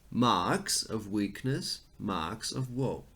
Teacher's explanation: Because the first syllable is stressed and not the second one, there is a strong emphasis on marks.